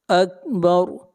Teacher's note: جہاں بھی را کے اوپر زبر یا پیش ہوگی را کو موٹا پڑھیں گے، اور جہاں زیر ہوگی را کو باریک پڑھیں گے۔ اکبر، یہاں پر را سے پہلے زبر ہے اس لیے را کو موٹا پڑھیں گے